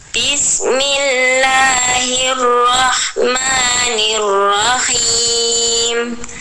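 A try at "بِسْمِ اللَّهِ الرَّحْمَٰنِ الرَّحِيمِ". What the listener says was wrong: Ya, bagus.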